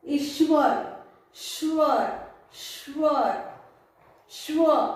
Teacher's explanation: श बोलते वक्त इसमें अ यह स्वर नहीं सुनाई दे रहा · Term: आधा व्यंजन